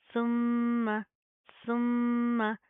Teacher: सा के ऊपर ज़ुबान बाहर की तरफ आएगी, नरमी से अदा होगा। मीम के ऊपर शादा गुना करेंगे, यानी कि साउंड इन नोज।